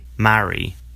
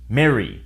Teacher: the A is followed by a double R, in which case the vowel is pronounced as eh in the US. In the UK, marry.